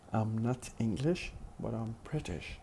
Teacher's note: So am has to be emphasized here. It has to be pronounced with stressed syllable because the sentence includes some kind of comparison between being English and being British.